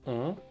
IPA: ɔ̃